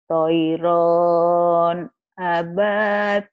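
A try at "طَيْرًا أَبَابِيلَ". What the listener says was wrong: Kok toiron? Kenapa panjang? Ibu berpikir ini alif pemanjang.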